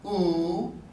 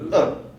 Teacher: because it's tense and lengthened it's longer than uh uh is a lax vowel so it's short